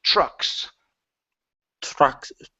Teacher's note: the TR is actually pronounced like a CHR.